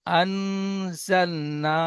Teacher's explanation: নুন সাকিনের আওয়াজকে নাকে তুলে এক আলিফ পরিমাণ গুন্না করে পড়তে হবে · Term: ইকফা